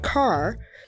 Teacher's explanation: in the word car you cannot hear the vowel a make a sound it is controlled by the R